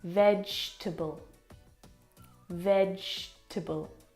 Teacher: We don't pronounce that second syllable.